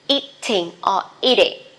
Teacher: because T, that is not stressed, you can pronounce as soft D.